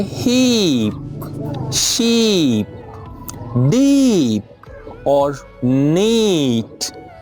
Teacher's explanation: when you produce the long vowel E, what you do is your mouth is widened a little, just like when we are laughing or when we give a big smile, like this, okay?